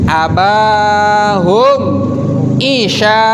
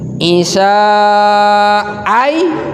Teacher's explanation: Nah isya panjang, sya-nya panjang dan ainnya, huruf ainnya harus jelas. Isya ai. Nah, antara huruf ain, yang pertama huruf ain, yang kedua huruf hamzah, sama-sama fathah itu, sama-sama hampir sama itu hurufnya, bukan sama-sama fathah.